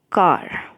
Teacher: कार में आ बहुत बड़ा है, बहुत बड़ा मुंह खुलता है आपका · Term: long vowel sound